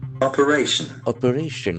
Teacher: the accent falls on the third syllable